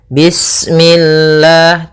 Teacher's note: lafal Allah ketika sebelumnya kasrah, maka dia dibaca dengan tipis, ya, dengan L.